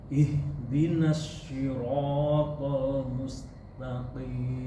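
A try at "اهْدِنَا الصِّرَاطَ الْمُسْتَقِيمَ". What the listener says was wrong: Si atau shi? Si. Kalau Bapak baca tadi shi. Nah sekarang sebutnya si, enggak shi, tapi bacaannya si. Jadi seperti membaca si. Nah, si. Ihdinas siratal mustaqim.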